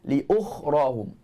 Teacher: Tebal dan berangin ketika sebut huruf kha.